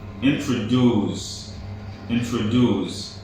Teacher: the word introduced is pronounced with stress at the end